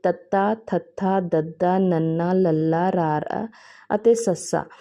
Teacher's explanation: ਇਹਨਾਂ ਦੇ ਉਚਾਰਨ ਵੇਲੇ ਸਾ ਦੀ ਹਵਾ ਨੂੰ ਜੀਭ ਦੀ ਨੋਕ ਦੁਆਰਾ ਉੱਪਰਲੇ ਦੰਦਾਂ ਦੇ ਪਿਛਲੇ ਪਾਸੇ ਤੋਂ ਰੋਕਿਆ ਜਾਂਦਾ ਹੈ। ਇੱਥੇ ਇਹਨਾਂ ਵਿੱਚੋਂ ਤਤਾ ਥਾ ਦ ਸ਼ੁੱਧ ਦੰਤੀ ਹਨ ਅਤੇ ਬਾਕੀ ਧੁਨੀਆਂ ਦਾ ਉਚਾਰਨ ਦੰਤ ਪਠਾਰੀ ਹੈ। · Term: ਦੰਤੀ ਧੁਨੀਆਂ